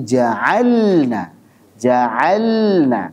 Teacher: ini hukumnya izhar ya lam sukun pada fi'il ketemu dengan Nun hukumnya izhar jangan sampai Antum baca dengan Ikhfa maupun idgham Bukan ja'alna ja'alna tapi ja'alna ja'alna kenapa karena makhrajnya berdekatan ini